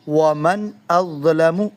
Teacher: ہم نے نون ساکن میں اپنی آواز ناک میں نہیں لے کے گئے